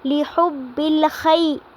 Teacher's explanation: خی پہ جو ہے یائے لین ہو رہی ہے کیونکہ یا ساکن سے پہلے زبر آ رہی ہے